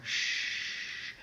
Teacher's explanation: I'm adding noise by restricting the airflow that's called a fricative